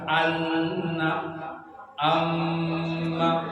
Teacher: 2 huruf nun sama mim itu ghunnah, ditahan 2 harkat.